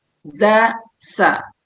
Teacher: Kalau sin sama za itu masih sama-sama tipis.